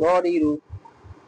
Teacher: এখন আসেন আমরা 10 নম্বর মাখরাজ র। হ্যাঁ, জিহ্বার আগার পিঠ তার বরাবর উপরে তালুর সঙ্গে লাগাইয়া র